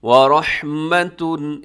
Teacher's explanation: اس میں را موٹا رکھیے گا، را کی اوپر حرکت ہے ، رحمتن، وقف کر دیں گے تو وَرَحْمَةٌ ایسے ہو جائے